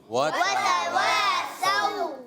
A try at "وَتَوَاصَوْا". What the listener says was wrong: اگر سو کریں گے تو سین ادا ہو جائے گا. ہم نے سو نہیں پڑھنا، سو سین، اور صاد میں کیا ہوگا؟ وَتَوَاصَوْا، ایکسٹرا موٹا.